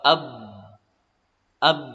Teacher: Contohnya huruf ba, ab, tertahan disebabkan bibir atas dengan bibir bawah tertutup rapat, maka tidak ada celah untuk mengalirnya suara